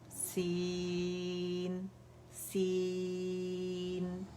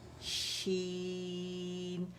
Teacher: سین کے اندر جو وسٹنگ ساؤنڈ ہے اس کو ہم نے مٹ نہیں کرنا, شین کے اندر شاورنگ ساؤنڈ ہے اسے مٹ نہیں کرنا